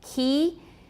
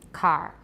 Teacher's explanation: for key we can say it's palatalized because it's moving towards the palatal region